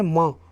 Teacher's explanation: माँ बोलेंगे तो नाक से निकलना है ना स्वर, इसलिए इनको नासिक के द्वारा बोला जाता है, इसीलिए इनको अनुनासिक वर्ण कहते हैं दोस्तों।